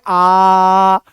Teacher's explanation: आ में मुंह पूरा खुलता है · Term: विवृत्त स्वर